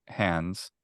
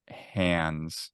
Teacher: it's a broader diphthong like I say hands